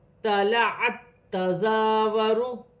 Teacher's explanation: تا ساکن ہے، آگے تا مشدد ہے، دونوں کو ملا کر پڑھا جائے گا